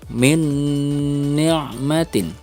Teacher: nun sukun bertemu dengan huruf nun, harus ada dengung di sini.